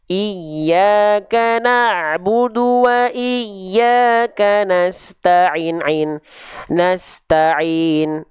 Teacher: maka dua harokat itu seperti kadar melafalkan ain sebanyak 2 kali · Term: 2 harokat